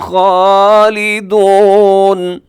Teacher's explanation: خا موٹا پڑھا جائے گا، خا کو آپ باریک نہیں کریں گے